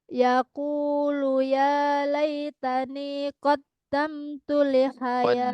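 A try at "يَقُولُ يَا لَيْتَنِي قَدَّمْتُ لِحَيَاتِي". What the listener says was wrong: Qaddamtu bukan qaddam. Qaddamtu.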